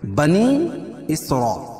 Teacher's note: دونوں الگ الگ کلمے تو مد منفصل ہوگا، اس میں قصر اور توسط ہے، ایک الف سے لے کر 2 الف تک اس کو کھینچ کے پڑھیں گے